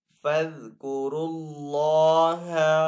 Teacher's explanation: اللہ عز و جل کے نام کو یہاں پہ پر پڑھیں گے کیونکہ پہلے والے حرف کے اوپر پیش آ رہی ہے